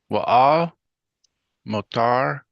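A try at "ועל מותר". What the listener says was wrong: Moo. Make sure you do ooh like a cow mooing. Wa'al moo.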